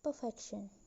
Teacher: The stem is perfect plus suffix ion became perfection. So the stress moved from per to fect. From the first syllable to the second syllable in the stem.